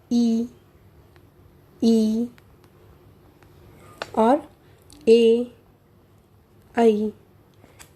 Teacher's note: इनके उच्चारण में हमारी जिह्वा का अग्रभाग सक्रिय रहता है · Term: अग्रस्वर